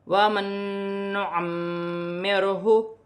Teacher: نون ساکن کے بعد نون مشدد آ رہی ہے تو یہاں پر ادغام مع الغنہ کا قاعدہ ہے، نون ساکن میں غنہ کیا جائے گا · کیا جائے گا، اور یہاں پر میم مشدد آ رہی ہے، میم مشدد میں بھی غنہ ہوگا ، اور یہاں پر کاف باریک بھی ہے اور مشدد بھی